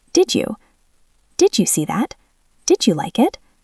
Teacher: Did ends with D, you starts with Y. When D and Y touch, they turn into a J sound, like jump. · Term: assimilation